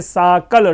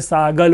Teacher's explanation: क हो, च हो, त हो, ये जो अघोष वर्ण हैं, ये घोष में परिवर्तित हो जाते हैं, ग, ज और द, यानी तृतीय वर्ण में परिवर्तित होती है।